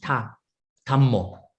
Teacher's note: Thai people, because the Thai they cannot pronounce DH. So for whatever DH they pronounce TH